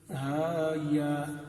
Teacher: ان کو ہم لمبا نہیں کر رہے، ان کو صرف کھڑی زبر کے ساتھ ان کی جو مد اصلی ہے صرف اسی کو واضح کر رہے ہیں، اس لیے کہ یہاں جو ہا میں اور یا میں یہ جو حرف مدہ آ رہا ہے، اس حرف مدہ کے بعد کوئی سبب نہیں ہے کہ اس کو لمبا کیا جائے.